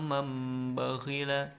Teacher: Pengertiannya adalah apabila ada nun mati dan tanwin bertemu dengan salah satu huruf iqlab, maka cara membacanya adalah dengan mengganti huruf nun sukun atau tanwin menjadi huruf mim, kemudian didengungkan 2 harokat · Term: iklab